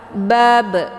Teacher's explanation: qalqalah ini dia harus dibaca secara dipantulkan atau dilepas. Bab, keluar bunyi be.